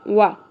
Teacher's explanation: واو کے اوپر سنگل زبر ہے، اس وجہ سے اس کو صرف آدھی الف کے برابر کھینچنا ہے، یعنی ایک ہی حرکت ہے، ایک حرکت کے برابر کھینچنا ہے، وا نہیں پڑھنا، وا۔